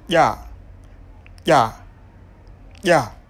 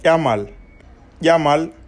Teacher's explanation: une consonne dont l'articulation se situe au niveau du palais dur, la partie supérieure du dedans de la bouche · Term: Palatale